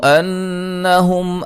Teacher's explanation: نون مشدد پہ غنہ ضروری ہے